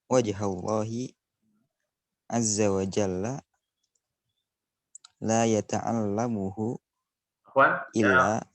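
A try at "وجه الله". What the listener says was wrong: wajhullah laisa wajhallah wajhullahi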